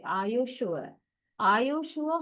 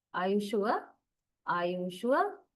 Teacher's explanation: First falling and then rising. · question expressing great doubt to surprise has a falling rising intonation pattern